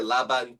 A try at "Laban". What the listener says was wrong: it's probably the Laban. yeah, it's the pronunciation of the A. It's like dragged out of you.